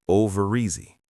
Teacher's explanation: The R in over connects to the E in easy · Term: connected speech